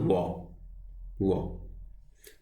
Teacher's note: वो बोलने में आप देखोगे दोनों ओंठ क्या कर रहे हैं, दांतों को स्पर्श कर रहे हैं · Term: दंतोष्ठ